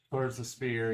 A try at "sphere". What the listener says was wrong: Really get that hard F.